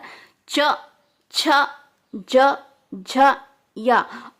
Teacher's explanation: च और य और श ये कहां से बोले जाते हैं तालू से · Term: तालव्य